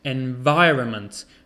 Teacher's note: We don't say the N.